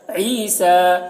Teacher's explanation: عین کو حلق سے ادا کریں گے، سین میں کھڑا زبر ہے، ایک الف کے برابر کھینچ کر پڑھیں گے، اس یا کو نہیں پڑھا جائے گا۔